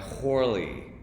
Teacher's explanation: he's pronouncing his name with an aspiration